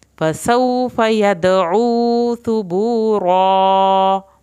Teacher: ثا کو زبان کی نوک سے پڑھیں گے